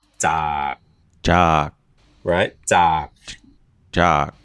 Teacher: J in Thai, in English, J is voiced. So it's not voiced. It's actually coming from the front teeth.